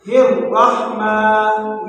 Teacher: یہ جو را ہے اس کو موٹا کر کے پڑھیں گے